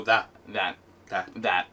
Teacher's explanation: people go about that almost with a d noise or almost like they don't even say the t yeah you just go that that that that yeah it just · Almost with a D noise, or almost like you don't even say the T.